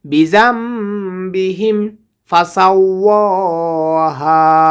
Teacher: নুন সাকিনকে মিম দ্বারা পরিবর্তন করিয়া পড়িতে হবে, কারণ নুন সাকিনের পরে বা এসেছে, ক্লাপের হরফ বা এসেছে।